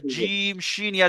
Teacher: যখন আপনি পড়বেন তখন দেখবেন আপনার জিভের মাঝখানে উপরে তালু ঠেকছে